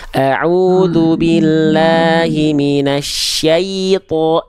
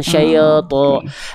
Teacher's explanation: Ya sukun syai, ya i-nya jelas, jangan terbawa huruf to.